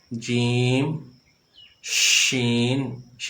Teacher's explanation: جیم، شین کو اس انداز سے ادا کیا ہے، اس کی جو آواز ہے منہ کے اندر پھیل گئی ہے۔